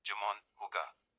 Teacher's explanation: J is pronounced as a strong throaty h sound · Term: strong, breathy H sound